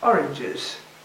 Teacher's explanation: What you have to do is to add a syllable, so that the last one can be heard.